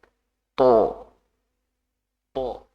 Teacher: itu bisa menjadi berat atau nanti apa istilahnya Istia ya jadi ketika melafalkan tho itu pangkal lidah diangkat biar nanti keluar lebih berat